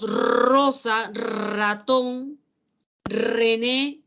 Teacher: el sonido vibrante es múltiple · la punta de la lengua vibra vibra vibra varias veces